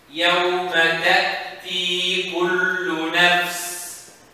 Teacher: So when the Hamza sound happens, what happened to the vocal cord? Closes. That's why the sound is not extended.